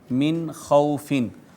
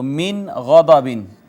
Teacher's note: اس کو من خوفن کی بجائے من خوفن پڑھیں گے، فقط نون کو ظاہر کریں گے، آواز چھپائے بغیر آگے چلے جائیں گے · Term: اظہار